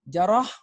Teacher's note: Dia bacanya 2 harakat, dia mad asli. Jarah, huruf ra baca tebal, tafkhim, huruf ha tu sifat dia hamas, jarah.